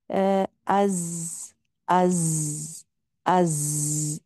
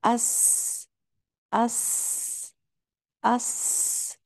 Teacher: اسی طرح اس اس، یا صاد میں بھی، صاد کیونکہ موٹا حرف ہے تو اس کے اندر آواز تھوڑی موٹی ہو جائے گی. اس اس، یہ جو بزنگ سی ساؤنڈ آپ کو سنائی دے رہی ہے اس کو کہتے ہیں سیٹی کسی آواز